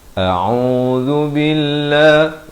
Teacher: zal di hujung lidah